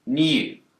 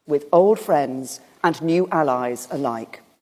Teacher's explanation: brits will tend to pronounce a y sound here